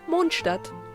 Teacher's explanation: Just like as if you would say moon, but with more of a relaxed O, and Stadt with a relaxed A. You can achieve this by just dropping your jaw and not moving your tongue, other than the English A.